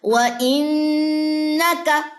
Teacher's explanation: نون مشدد کا غنہ اور ساتھ میں زبر تھی، ہم نے زبر لمبی نہیں کی